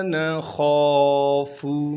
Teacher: نون کے بعد خا ہے، خا کو موٹا کر کے پڑھیں گے، اور خا کے بعد الف مدہ ہونے کی وجہ سے خا کو ایک الف کے مقدار کھینچیں گے